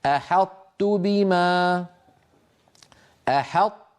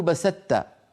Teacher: يدغمون الطاء في التاء الا صفه الاطباق